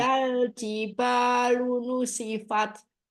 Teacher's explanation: Jiba, ba, syiddah, jaharkan lagi ba-nya.